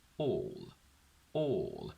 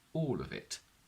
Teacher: So what happens is that if a word ends on a dark L on its own, but then it's followed by a vowel sound coming from the word next to it, the dark L transforms into a clear L, because now we have the combination of the letter L plus a vowel